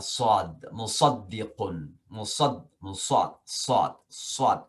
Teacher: Jadi kayak sin tapi ditebalkan